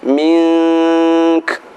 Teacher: Minka ketika berhenti mink, min dibaca dengung, kemudian kaf ada hamasnya